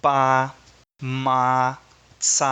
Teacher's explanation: a camats é uma vogal longa por ser usada numa sílaba aberta